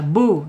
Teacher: asyafatain itu dua bibir terkatup